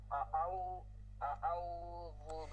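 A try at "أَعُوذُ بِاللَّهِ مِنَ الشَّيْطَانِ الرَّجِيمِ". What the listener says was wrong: আউ আপনি মনে হয় আউ দুইবার হচ্ছে।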